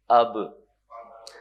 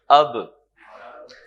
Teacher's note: قلقلہ کہتے ہیں آواز تھوڑی سی اچھلتی ہے، باؤنس کرتی ہے